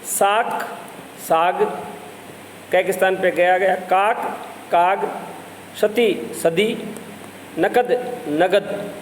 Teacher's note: कभी कभी मुख सुख के लिए अघोष ध्वनियों को घोष कर दिया जाता है, यानी वे ध्वनियाँ जो अघोष होती हैं, जिनमें स्वर तंत्री में कंपन पैदा नहीं होता, उनमें कंपन पैदा कर दिया जाता है, घोषीकरण हो जाता है।